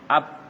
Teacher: berarti keluar dia dari kedua bibir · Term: huruf bibir